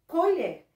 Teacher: Nós já descobrimos que a última sílaba, ela é a mais forte. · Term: oxítona